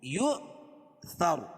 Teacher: یا لکھی اس کے اوپر حمزہ اور جزم ہو تو وہاں جھٹکا ہوگا. تو یہاں حمزہ واو کی شکل میں ہے اور اس کے اوپر جزم ہے تو یہاں جھٹکا کریں گے ہم · وقف کی صورت میں رائے ساکنہ سے ما قبل حرکت زبر ہے، اور وصل کی صورت میں را پر پیش رہے گی تو را کو پر پڑھیں گے